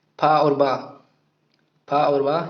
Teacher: बात करेंगे फा के उच्चारण स्थान की, तो हो जाएगा फा का उच्चारण स्थान दंतोष्ठ है। फा और बा, फा और बा ये दंतोष्ठ से बोले जाते हैं